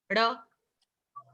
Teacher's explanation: जीभ पीछे करके ड़ बोलते हैं आप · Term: रेट्रोफ्लेक्स वाला ड़